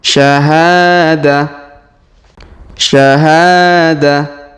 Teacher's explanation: huruf ha kita panjangkan dua harakat karena Alif di depannya syahada Syahadah kemudianq huruf d perhatikan kita